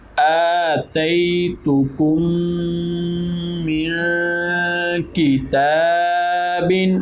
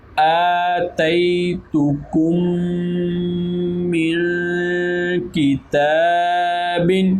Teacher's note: میم ساکن ہے اور میم ساکن کے بعد حرف میم ہے تو ادغام شفوی ہو گیا · نون ساکن ہے اور نون ساکن کے بعد کاف ہے تو یہاں پر اخفا ہوگا، یعنی کہ یہاں پر ادغام شفوی اور آگے اخفا.